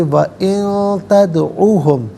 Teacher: نون ساکن کے بعد تا حرف اخفا ہے تو نون ساکن کو اخفا کے ساتھ پڑھیں گے۔